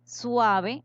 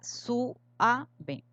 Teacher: la diéresis es una licencia poética que permite en un verso deshacer un diptongo para obtener dos sílabas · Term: falso hiato